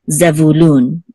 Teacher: The accent is on lun, which is the last syllable